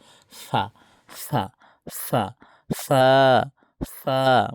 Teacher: দুই ঠোঁট থেকে উচ্চারণ হয় ফা, হালকা বাতাস বের হবে।